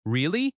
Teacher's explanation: Notice the rising tone at the end. Your voice goes up.